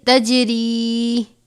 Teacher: یہ جیم حرف قلقلہ جنبش دیں گے